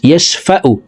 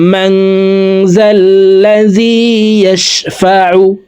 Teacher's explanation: এভাবে পড়লে আইনের উচ্চারণ সঠিকভাবে হবে না, হলকের মধ্যখান থেকে আইন হরফের উচ্চারণ করতে হবে